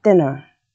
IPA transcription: dɪnɚ